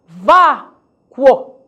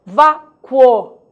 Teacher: Nesse momento, o U é semivogal e o O vogal.